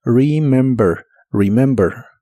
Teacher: La R de inglés es como la R de español, pero mucho más suave. Y la primera E de esta palabra se pronuncia como una I corta